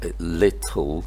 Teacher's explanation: the first L is produced with a clear L in British English and a dark L later on then. In the second L then.